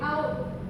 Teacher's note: Bibir membulat. Gerakannya dari lidah bawah ke belakang atas dan dari mulut lebar ke bibir bulat.